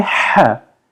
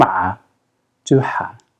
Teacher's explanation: Now we're going to say ha and turn on the vocal cords. So ha and a are pronounced the exact same way with the exception that a has vocal cords deployed.